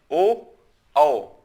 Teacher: कंठ का भी सहारा लिया जा रहा है, ओष्ठ का भी सहारा लिया जा रहा है। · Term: कंठ और ओष्ठ